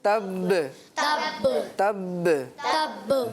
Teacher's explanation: जमाव हो रहा है जी। होंठ जोर से लग रहे हैं